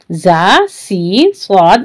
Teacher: ये हुरूफ सुफीरिया कहलाते हैं, यानी सीटी वाली आवाज आएगी इसमें। ज़ ऊपर के दांत नीचे के दांत लगेंगे और जबान अंदर रहेगी।